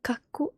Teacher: k at the start and a and this Ka and then there is a double k in the middle of the word that means that um you need to pronounce the k two times